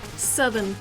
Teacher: You don't even soften the R, you just don't say it.